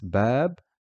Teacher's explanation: Notice how the aleph is extending the fatha which is on the ba.